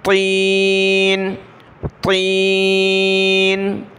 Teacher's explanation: چھوٹی تا نہیں پڑھنا، تین نہیں پڑھنا بلکہ موٹا کریں گے تو کو، بڑی تو ہے، کلرفل بھی ہے، طین، طین۔